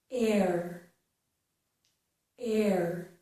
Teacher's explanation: mouth is opening more, my jaw is lowering, okay, my lips are not rounded. Air, air. And then as I complete that sound, my jaw closes. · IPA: / ɛɹ /